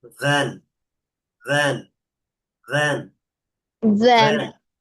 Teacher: ভ হচ্ছে এই যে নিচের ঠোঁটের ভিজা অংশ আর উপরের দাঁতের আগা।